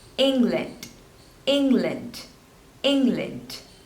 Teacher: two syllables and you have to stress on the first one